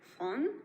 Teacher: The sound is realized more centralized